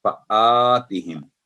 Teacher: अलिफ की आवाज थिन होगी बारीक